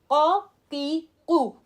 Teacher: قاف heavy, imagine the قاف back of my ٹنگ میرے کوے کو ٹچ کرے گا